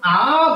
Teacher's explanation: আমার সম্মুখ এবং পশ্চাৎ যদি হিসাব করি, আ বলে জিহ্বা একদম নিচে শুয়ে পড়ে, সামনের দিকেও আগায় না, পিছনের দিকেও যায় না, এই জন্য আ উচ্চারণে কেন্দ্রে থাকে জিহ্বা। আবার আ উচ্চারণে দুই ঠোঁটের দূরত্ব সব থেকে বাড়ে, এই জন্য এটাকে বিবৃত বলে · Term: জিহ্বা শায়িত